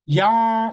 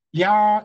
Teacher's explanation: 그러나 복합 모음은 이중 삼중인데요. 이게 한 음절이긴 하되 발음하는 동안 입술 모양이나 혀 위치가 달라져요.